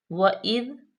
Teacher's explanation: وَإِذْ قَالَ مُوسَى، وَإِذ واو پہ زبر ہے، حمزہ زیر ذال، اذ ذال پہ زا کی آواز نہیں آنی چاہیے، سیٹی کی بالکل نرمی سے